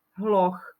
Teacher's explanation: Píše sa to z h, na konci je h, a h patrí medzi párové znelé spoluhlásky, ale vyslovuje sa to ako ch, hloch, ako párová neznelá spoluhláska.